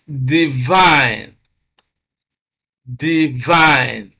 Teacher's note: And because this first syllable contains a weak vowel, which is the short E sound, whereas the second syllable contains a strong vowel, which is a diphthong I, So stress is on the second syllable because it has a stronger vowel, and this syllable is then described as a strong syllable.